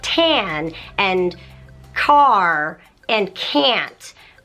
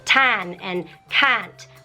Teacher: the a is harder and longer and not with that kind of like English slang thing going on